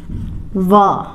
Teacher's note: हमारे दांत और होठ मिलकर हम वा को उच्चारण कर पाते हैं। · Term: दंत ओष्ठ